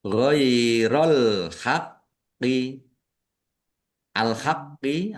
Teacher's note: Alif lam qamariah ditandai lamnya dibaca sukun. Kemudian qofnya ada tasdidnya dibaca dobel ditekan dan ditahan biar tampak dobelnya